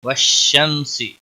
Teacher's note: شین کے اوپر تشدید ہے، تھوڑا سختی کے ساتھ پڑھیں گے۔